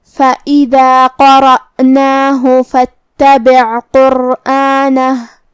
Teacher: فا کے بعد حرف تا پڑھیں گے جو کہ تا پہ تشدید ہے لہذا دو حرف کے برابر ہمیں تا کو پڑھنا ہے